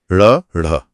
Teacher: जीभ पहले पीछे मूर्धा पर जाती है और फिर हवा को रोककर एक झटके के साथ बाहर की तरफ फेंकती है। ऐसा लगता है जैसे जीभ ने हवा को बाहर उछाल दिया हो। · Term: उत्क्षिप्त